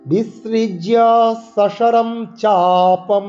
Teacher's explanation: স দন্তাস এবং তালিব্বাস উচ্চারণ করতে হবে